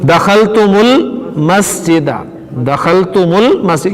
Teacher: ये दखल तुम जो है इस तुम के मीम साकिन को आगे मिलाएंगे पेश के साथ, ठीक है ना, दखलतुमुल मस्जिदा।